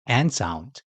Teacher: When making the n sound, the front part of your tongue touches the roof of your mouth while your tongue bends upward. If you draw that upward folding tongue shape, it becomes n.